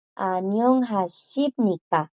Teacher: Si tiene una I a la par, ella suena shi.